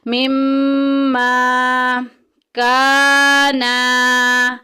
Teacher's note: اوپر شد آئے گی وہاں ہم غنہ کریں گے، ناک میں آواز لے کے جائیں گے